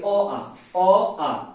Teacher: पूरा कंठ से आवाज आ रहा है, पूरा एकदम से आपको स्पष्ट लग रहा है, तो अ आ हो जाएगा कंठ, अ आ कंठ से आ रहा है।